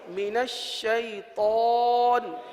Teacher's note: اس میں طا آ رہا ہے، طا کو پر پڑھیں گے، طا حروف مستعلیہ میں سے